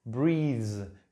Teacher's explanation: como vibra el sonido y tiene voz, la S entonces termina siendo influenciada y se pronuncia como este sonido que tiene voz